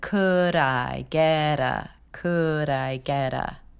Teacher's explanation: And by connecting that D over to the I sound and the T over to the sound, your tongue is creating a little bit of a flap and a jumping off point for the next sound.